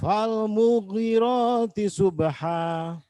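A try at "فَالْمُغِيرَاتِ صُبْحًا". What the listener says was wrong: Falmughi panjang. Falmughi panjang.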